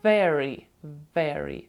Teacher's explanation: буква V у передостанньому слові very завжди буде губа у нас заходити під верхні зуби